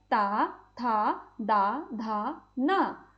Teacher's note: इनका उच्चारण करते समय जीभ हमारे दांतों को छू रही है। तो यह हमारे दंत व्यंजन कहलाएंगे।